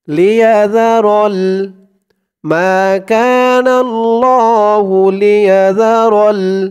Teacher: জালের উচ্চারণটা কিন্তু একদম নরম পাতলা হবে, জিহ্বার মাথা উপরের দাঁতের মাথার সাথে লাগবে